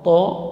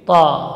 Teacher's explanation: huruf yang tebal, bukan berarti bunyinya o, to, tapi ta, tetap fathah namun tebal, karena tidak ada harakat o dalam bahasa Arab. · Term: huruf ta